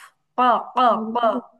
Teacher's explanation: জিভ, জিহ্বার গোড়া, তারপর আবার উপরের তালুর সঙ্গে লাগায়া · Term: কফ